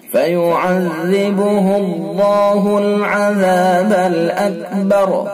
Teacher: फयुअज़्ज़िबुहुल्लाहुल अज़ाबल अकबर, अल्लाह कलाम पुर, अल्लाह कलाम से पहले अगर जबर पेश होता है तो अल्लाह कलाम पुर पढ़ा जाता है। तो यहाँ अल्लाह कलाम से पहले हा के ऊपर पेश है, लिहाजा अल्लाह कलाम पुर यानी मोटा पढ़ा जाएगा